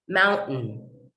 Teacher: the final sound n tells me to hold the t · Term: glottalization